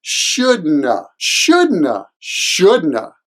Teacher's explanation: the shouldn't have is de-stressed at the end, so it usually sounds like shouldna, shouldna, shouldna.